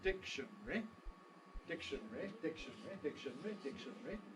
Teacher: if everything is present we have four syllables dictionary dictionary but you could compress between the last two syllables